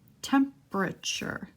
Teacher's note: the P goes right to the R, we're skipping the E.